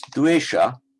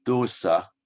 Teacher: Now this dvesha becomes dosa in Pali. The w drops out, but the influence of the labial w changes the vowel from an e to an o, so dosa. So, ati dosoti, is there such a thing as doso?